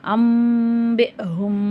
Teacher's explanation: இங்கே இக்லாபுடைய சட்டம் வரதுனால அந்த நூனுடைய சப்தத்தை மீமா மாற்றி நம்ம குன்னா செஞ்சு ஓதணும்.